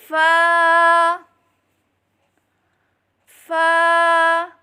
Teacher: ऊपर के दांतों के किनारे और निचले होंट के तर हिस्से से अदा करें · اوپر کے دانتوں کے کنارے اور نچلے ہونٹ کے تر حصے سے ادا کریں